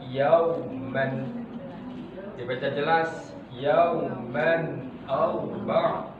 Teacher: Dibaca izhar ketika tanwin bertemu dengan hamzah, bertemu dengan huruf-huruf halqi, disebut dengan izhar halqi